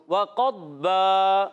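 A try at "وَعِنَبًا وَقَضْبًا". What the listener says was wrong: बाज़ बच्चे दौद में कलकलात करते हैं, अभी जैसे हमारे प्यारे बच्चे ने वक़द्बा पढ़ा ना, क़द क़द नहीं पढ़ना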